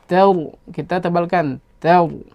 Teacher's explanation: ra yang sukun sebelumnya fathah, maka kita baca ra tafkhim, maka dibaca tebal. Maka dibaca tebal, tidak kita baca seperti tadi tar tidak.